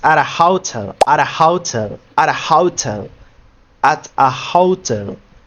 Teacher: If the T if the T is between two vowels like we like we see here two vowel sounds the T becomes unstressed and we make it like flap D or flap T. It's called usually for Spanish speakers, it's called the flap R because it's similar than the R in Spanish, but it's not the same.